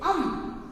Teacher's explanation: इसे कहते हैं अनुस्वार। इसको बोलते समय नाक और मुंह से वायु निकलती है, ये कहलाते हैं अनुस्वार